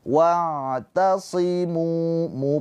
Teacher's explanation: Sebelumnya harakatnya dommah. Maka munya ini panjang dua harakat. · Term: Mad thobi'i